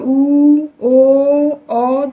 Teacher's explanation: क्योंकि जब हम इसका उच्चारण करते हैं उ ओ औ कहीं ना कहीं मुख के पश्च भाग से जो उच्चारण है जो ध्वनि है वह निष्कासित होती है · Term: पश्च स्वर